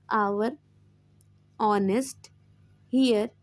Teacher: Now next next point is an article an is used before our honest here because the letter H is silent and the pronunciation begins with a vowel sound